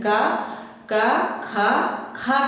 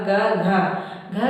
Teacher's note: जब हम उच्चारण कर रहे हैं का खा, खा कह रहे हैं तो ज्यादा वायु निकल रही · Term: महाप्राण